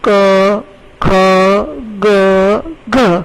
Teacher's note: કંઠ એટલે ગળાનો ભાગ. જે અક્ષરો તમે મારી સાથે બોલશો તો ગળાના ભાગમાંથી તમે અવાજ કાઢી શકશો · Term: કંઠ્ય